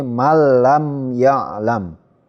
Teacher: nun sukun atau tanwinnya itu masuk ke huruf lam atau ro, tetapi tidak mendengung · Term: idgham bila gunnah